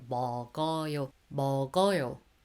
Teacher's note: the G bottom consonant carried on to the next syllable.